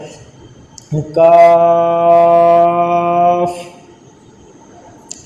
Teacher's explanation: یہ زبان کی جڑ اور تعلق کے سخت حصے سے ادا ہوتا ہے۔ جب زبان کی جڑ اور تعلق کا سخت حصہ آپس میں ملیں گے اس وقت یہ کاف ادا ہوگا۔ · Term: کتاب والا کاف